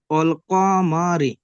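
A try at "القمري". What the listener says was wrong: টান দেবেন না, অল কমারি। হুম আচ্ছা, এই রটা কি হবে বলে তিনি? এই রটা কেন বারিক হবে? বারিক করতে হলে কেমন ভাবে পড়তে হবে রকে? মুখটাকে অল কমারি, তাই না?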